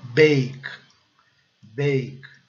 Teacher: Observem que o A recebe o som básico de E, o E é silencioso.